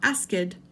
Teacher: This is a tricky one for your mouth because you have to produce the K sound and then the T sound. But it's still only one syllable